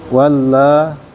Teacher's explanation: Wam waman waman ee ikhfa hakiki ditahan dua harakat. Walla mad thobi'i panjang dua harakat